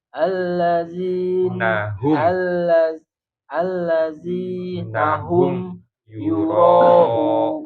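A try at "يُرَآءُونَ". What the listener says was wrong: Ro-nya panjang ada 2. Kalau yang hurufnya 2 panjang.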